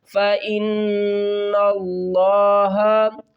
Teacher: نون کو اب لفظ اللہ کے لام سے ملائیں گے · فَاءُوا فَاءُوا فَإِنَّ اللَّهَ، فا زبر فا حمزہ نون زیر ان، نون جو مشدد ہو اس کے اوپر ہم غنہ کر کے پڑھتے ہیں۔